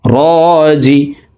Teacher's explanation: রর উপরে খারা জবর আছে, তাই র হরফকে একালিফ টেনে পড়ব। রাজিউন, উ এখানে 3 আলিফ টেনে নুনকে সাকিন করে ফেলবো, কারণ পেশের বাম পাশে জজমালা ওয়াও মদর হরফ।